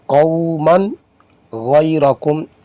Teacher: نون تنوین کے بعد حروف حلقی میں سے غائن آیا ہے، اس لیے اس کو ظاہر کر کے پڑھیں گے، یعنی گنہ نہیں کریں گے۔ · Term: اظہار